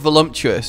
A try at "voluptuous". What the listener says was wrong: Voluptuous. There's no M in that word, by the way. That makes it sound silly. It's voluptuous. No, it's not voluptuous.